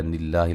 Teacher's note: لفظ اللہ کو باریک اس سے پہلے زیر ہے